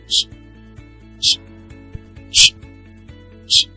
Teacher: a voiceless palatoalveolar affricate consonant sound. This is pronounced ch, ch, ch, ch.